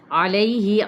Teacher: عین کو وسط حلق سے ادا کریں گے